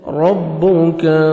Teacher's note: را کو موٹا کر کے پڑھیں گے، کاف کو باریک پڑھیں گے